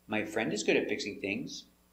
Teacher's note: It's a positive statement, so the intonation goes down at the end.